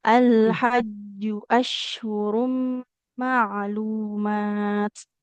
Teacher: jimnya enggak boleh panjang domah enggak ada wunya